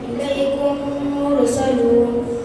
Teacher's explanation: میم ساکن کے بعد میم آئے تو میم کو میم سے ملا کر غنہ کے ساتھ پڑھیں گے، اس کو ادغام شفوی کہتے ہیں، جیسے الیکم مرسلون۔